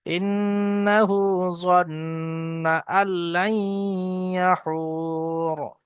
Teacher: এখানে ওয়াকফ করছি তাই রয়ের উপরে এখানে সাকিন হয়ে যাচ্ছে